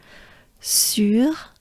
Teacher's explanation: it ends with the breath for the French R